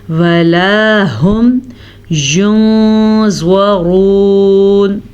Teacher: ولا هم ينظرون، نون ساکن سے بعد والا حرف جو ہے حروف اخفا میں سے ہے، تو ہم نون ساکن کو چھپا کے پڑھیں گے